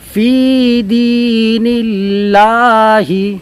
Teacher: لفظ اللہ کے لام سے پہلے زیر ہو تو باریک ہوگی